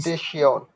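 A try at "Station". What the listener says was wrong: স্টাসিয়ন, টা, এটা এখানে এ না, আ, আ, স্টাসিয়ন, সিয়ন, স্টাসিয়ন মানে স্টেশন।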